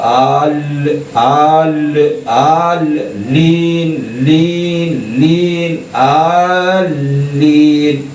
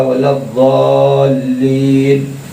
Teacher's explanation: ضاد کو بڑھا کر کے لام سے ملاؤ، پھر لام کو یہ سے ملا کر کے دبا کے پڑھو، جیسے آلین، آل، آپ کی زبان جو ہے اوپر کے دانت کی جڑ میں لگے، آل اور لین۔